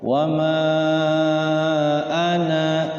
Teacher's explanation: Harus tahu ya, kalau kita pengen waqaf di ana berarti ananya 2 harokat.